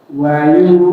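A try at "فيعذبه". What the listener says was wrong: Ayo, titik, ada titiknya. Pade ini huruf apa? Fa. Ini bukan.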